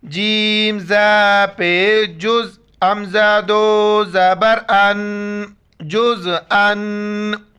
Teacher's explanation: تنوین کے وقت بھی ناک میں آواز چھپانا ہے